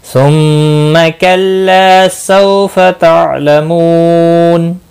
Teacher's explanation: सौ वाउलीन है, आइन साकिन को हिलाना नहीं।